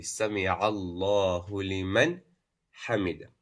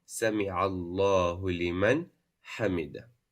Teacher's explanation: You have to pronounce the Nun Sukun. You have to show it as Idhaar. So it will be Sami Allahu liman hamida.